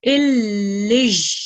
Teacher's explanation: We need to make sure that we do produce ya sound over here, and we do press down on the sound because it has shadda on top of it